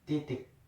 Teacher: Bunyi vokal I adalah bunyi vokal depan tinggi tak bundar.